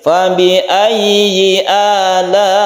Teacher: Yang pertama ini kita panjangkan satu alif saja, tapi yang kedua ini sampai 5 harokat atau 2,5 alif karena mad wajib muttasil.